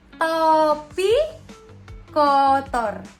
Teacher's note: O madya bawah dan O madya bawah belakang dengan kondisi bibir semi terbuka.